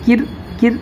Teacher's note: یہ دیکھیں تشدید والے حرف کو دو بار پڑھیں گے, ایک بار پیچھے سے ایک بار خود سے. اور رائے ساکنہ سے پہلے جب زیر آئے تو رائے ساکنہ کیا ہوگی؟ باریک ہوگی